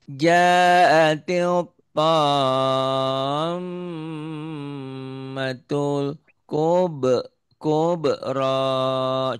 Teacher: M-nya ditahan karena gunnah.